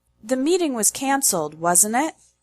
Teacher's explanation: The intonation when you use this type of question tag is high, low, high. The tone falls during the statement and rises again in the question.